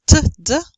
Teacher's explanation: We stop or we hinder the airstream by way of our tongue and by touching our tongue towards the alveolar.